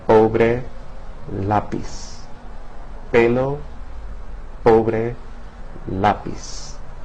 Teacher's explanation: P represents a sound very similar to the English P in puff. But that puff of air that's emitted is much more subtle in Spanish in comparison to English